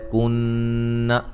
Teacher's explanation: کن نون مشدد پہ غنہ ضروری ہے